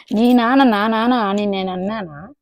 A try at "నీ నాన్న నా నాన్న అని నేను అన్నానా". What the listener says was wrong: ఇక్కడ మిస్ అయిపోయింది చూడు. నీ నాన్న నీ నాన్నే అది మిస్ అయింది.